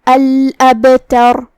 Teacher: آخری میں را پہ رکیں گے تو اس پہ جزم سے رکیں گے، تو را کا حکم ہوگا تفخیم، لہذا اسے بھاری آواز میں پڑھنا ہے · با کا حکم ہے قلقلہ. قلقلہ کا معنی ہے حرف ساکن کو ہلانا، تو ہم با کو ہلاتے ہوئے یہ کلمہ کو ادا کریں گے